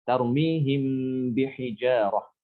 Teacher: disamarkan bacaannya ketika ketemu dengan huruf ba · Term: Ikhfa Syafawi